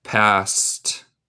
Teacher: El ed suena como T en este caso.